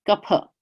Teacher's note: there's no F sound in Sanskrit. It's really a PH, P, kapha. But no one says kapha.